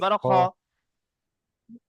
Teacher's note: জাবার খা খ খ জাবার, খা খ নয়, খ, জাবার মুখ খা গোল করে, মুখ গোল করে, পরে খটি মুখ গোল করে খ উচ্চারণ হয়, খ জাবার জাবার খ খ।